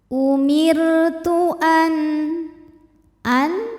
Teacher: Cara membacanya nun sukun dibaca dengan jelas, bunyi n dan tidak perlu ditahan. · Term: izhar halqi